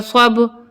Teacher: با پہ ہماری آواز پلٹ کر آئے گی کیونکہ با حروف قلقلہ کا حرف ہے